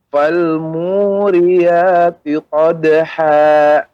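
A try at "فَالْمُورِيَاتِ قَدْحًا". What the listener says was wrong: Ya, Bapak, pengucapannya ha tidak ada berhenti, seperti ada jeda. Qadha, akan tapi mengalir. Qadha dengan qadha. Nah, maka itu ada seperti kita berhentikan dengan dipaksa. Qadha. Nah, sehingga mirip seperti ada waqaf ataupun ada hamzahnya jadinya.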